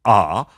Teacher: Let's say that you've got this low back sound, and it's ah.